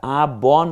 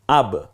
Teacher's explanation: তাহলে এখন দেখুন আ ব হয়ে যেত, কিন্তু না, এটা হসন্ত হওয়ার কারণে এটা আ ব না হয়ে হবে আব